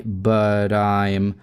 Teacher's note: flap T делаем, соединяем с I